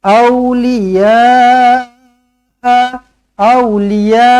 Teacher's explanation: awliya, ya 4 ataupun 5 harakat, mad wajib muttasil